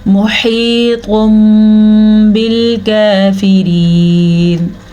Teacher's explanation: تنوین کے بعد با ہے تو تنوین کو ہم نے میم میں بدل دیا، اسی طرح یہاں پہ بھی اقلاب کا قاعدہ ہو رہا ہے۔